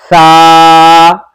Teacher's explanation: जबान की नोक और सनाया उलिया का किनारा